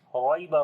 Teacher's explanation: Ra we read in heavy sound.